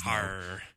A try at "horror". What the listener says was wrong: There's no A in horror.